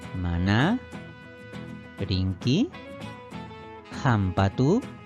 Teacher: la mayor fuerza de voz también recae en su última sílaba pero la entonación es de forma ascendente por lo tanto la pronunciación de la última sílaba es semi